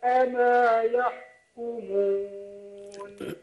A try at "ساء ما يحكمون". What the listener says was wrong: خد بالك، لا عمل للخيشوم في مخرج الواو، ما قلتش ايه ساء ما يحكمون. دي انت كده ثابت الواو مخرجها وراحت على الخيشوم، خدت بالك؟